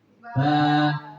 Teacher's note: fathah diikuti Alif dibaca panjang satu ayunan